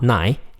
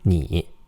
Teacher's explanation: Yeah, N-I is pronounced ni. I in Chinese is pronounced E, like a long E vowel, like almost like double E in English. Okay, E, ni, not nai, ni.